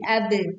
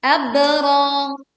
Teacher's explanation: ba sukun kita baca dengan suara pantulan yang jelas dengan memiringkan suaranya menjadi ab. Abra, panjang 2 harakat.